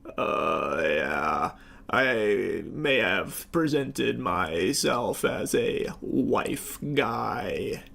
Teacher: he is putting on like an extra dollop of vocal fry